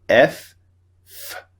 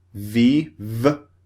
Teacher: vibration now this means it's voiced so f f is unvoiced VV is voiced they both use the same part of the mouth